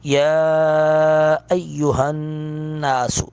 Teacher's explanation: مد منفصل ہے، دو الف کے برابر اس کو کھینچیں گے